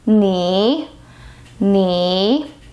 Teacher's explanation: it's a third tone the lowest point of your voice range